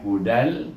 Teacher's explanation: Tetapi huruf dal ini kalau kita baca tanwin dan, tetapi oleh kerana dia bertemu dengan huruf lam yang bertasydid di sini, kita matikan dia dengan huruf lam, jadi bunyinya dengan idgham bila gunnah, tanpa dengung. Iaitu kita idghamkan dal ini dengan lam, bunyinya hudal, macam baris satu mati dengan lam, hudal.